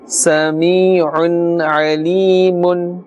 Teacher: the sound emanates or comes out from the center of the throat, the middle of the throat. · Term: Ayn